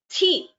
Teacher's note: this thi is a Mahaprana. You require more breath to pronounce that letter.